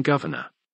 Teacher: The AME R is retroflex, and is often lost after an unstressed vowel if another R follows. The R in govern is pronounced, but is dropped in governor.